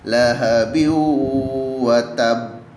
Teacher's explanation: memasukkan atau melebur dengan berdengung, sehingga ditekan terlebih dahulu 2 hingga 4 ketukan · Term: idgham bi ghunnah